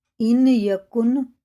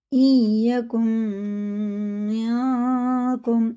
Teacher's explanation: این یکم یاکم، یہ اخفا ہے، اخفا کی مقدار 1 الف کے برابر ہے، ناک میں لے جا کے 1 الف کے برابر اسے کھینچ کے پڑھنا ہوتا ہے